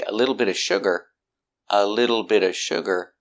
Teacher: you see that the t in little changes to a d